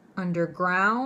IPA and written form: ˌʌndərˈɡraʊnd (underground)